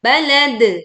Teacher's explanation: Balad, pantulkan dal, karena wakof di sini maka dia menjadi sukun atau mati dengan suara pantulan yang lebih jelas. Balad, dengan memiringkan suara pantulannya.